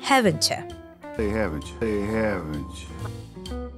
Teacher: Haven't you has this ch sound as a result of the letters T plus Y merging, and you gets reduced to y. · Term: connected speech